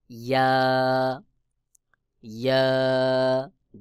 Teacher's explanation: জিহ্বার মধ্যখান তার বরাবর উপরে তালুর সঙ্গে লাগাইয়া ইয়া উচ্চারণ হবে, দুইটি ইয়া একই জায়গা থেকে উচ্চারণ হয়, যেমন ইয়া ইয়া।